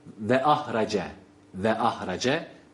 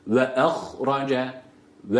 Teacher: tane kalın harf peş peşe gelmiş yine birincisi sakin ikincisi harekeli ha sakin kalın ra harekeli kalın